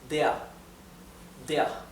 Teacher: the r is almost imperceptible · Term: muted a